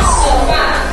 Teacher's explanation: La sílaba que se pronuncia con mayor fuerza de voz es A. Recae su mayor fuerza de voz entonces en la última sílaba. Por lo tanto, es una palabra aguda.